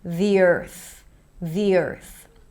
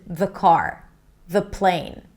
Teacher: That's because there is a vowel right after. When there is a vowel, we want to say the word the with an E sound so it's easier to connect.